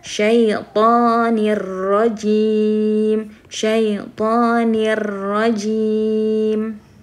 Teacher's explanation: Jadi nggak ada dengung dan tidak ada suara yang ditahan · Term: idgham bila gunnah